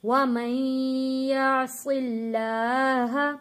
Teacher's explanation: یہاں پہ اللہ کا لام موٹا نہیں پڑھا جائے گا کیونکہ اللہ کے لام سے پہلے زیر آ رہا ہے